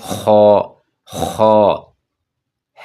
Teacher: جس پہ نقطہ ہے اس پہ تھوڑا زور لگاتے ہیں، جس طرح گلے کو صاف کیا جاتا ہے